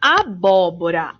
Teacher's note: o bó é a antepenúltima sílaba e é a sílaba tônica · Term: proparoxítona